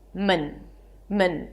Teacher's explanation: So technically, there is no vowel between the M and the N. · It's an M sound, then a schwa, and an N. Men, a reduced vowel.